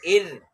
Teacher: را ساکن ہے، اس کے پیچھے والا حرف کے نیچے زیر ہے تو را بریک ہو رہا ہے